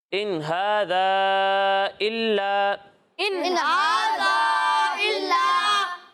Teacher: देखें यहाँ अलिफ मद्दा है, इसे हम 1 अलिफ के बराबर खींचेंगे। ठीक है, लेकिन यहाँ मद्दे मुनफसिल है, मद्दे मुनफसिल है, और मद्दे मुनफसिल को हम 2 या फिर 2.5 अलिफ के बराबर खींचते हैं।